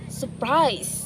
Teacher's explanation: Many native English speakers often drop the first R sound when they say this word. In surprise, there are two R sounds close together.